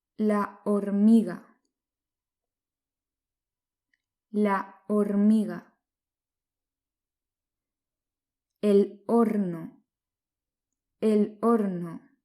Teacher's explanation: la letra h es muda en español igual que en francés